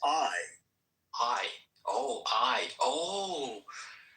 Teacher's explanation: The name I, like I went to. That's actually two sounds. Ah and E put together real fast. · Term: diphthong